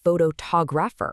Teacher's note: Suddenly it's photographer, with the stress landing hard on the second syllable. This sudden shift catches people completely off guard.